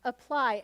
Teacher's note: you can hear this is unstressed because it's saying schwa